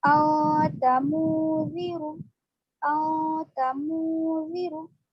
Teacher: यहाँ पर हम नून की आवाज को ला रहे नाक में, लेकिन जबान मखरज पे नहीं लगा रहे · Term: इख्फा